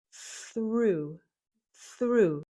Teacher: We start with an unvoiced th. The tongue is between the teeth and the air goes through and there's no voice.